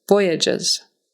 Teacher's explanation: This time the accent is on the first syllable, and again that G on the end there is pronounced like a J, and the S is going to be pronounced like a Z.